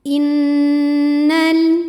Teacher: Innal, nunnya dihukumi gunnah musyaddadah atau wajibul gunnah atau nun musyaddadah sebab ada nun yang bertasydid. Cara bacanya dengung, bunyi n-nya tahan sampai terasa getaran hidung kurang lebih 2 harokat